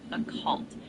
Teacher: It's typically pronounced occult, where the stress is on the second syllable. There are a few ways to say it, though, depending on the accent.